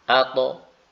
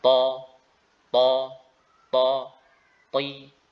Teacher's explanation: Pada huruf ta, ya, maka lidah bagian atas, bagian belakang itu diangkat. Ya. Yang ini berakibat lidah bagian tengah itu mencekung.